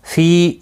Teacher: فی یا مدہ ہے، ایک الف کی مقدار کے برابر کھینچ کر پڑھیں گے